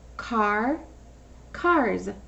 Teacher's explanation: It's that S that makes the Z sound. · when you put an S at the end of some words, it sounds like a Z, like zebra, but it's really an S.